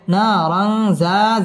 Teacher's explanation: তানবিনের বামে জাল আসছে জাল ইকফার হরফ গুন্না সহ পড়তে হবে